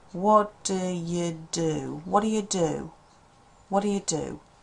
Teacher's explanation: You might be surprised I haven't got that t sound in at all. I think if you say it quickly, you'll probably find it's not there. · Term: connected speech